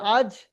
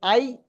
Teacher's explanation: জিভের মাঝখান এবং তার বরাবর উপরের তালুর সঙ্গে লাগিয়ে উচ্চারিত হয় জিম, শিন, ইয়া।